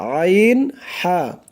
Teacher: গলা চিপে মানে গলার মাঝখান থেকে গলা চিপে উচ্চারণ করতে হবে